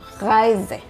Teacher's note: The German R is pronounced from the throat and not with the tongue R.